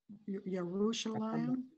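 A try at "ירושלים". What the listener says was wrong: That was right, yeah.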